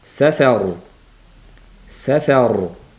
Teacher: Ikkita yo'g'onning orasida fa'ning ingichkaligini yaxshilab bildirishimiz kerak.